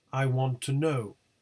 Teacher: sentence stress in the second tone unit no is the nucleus the word want is stressed but does not contain the tonic syllable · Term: onset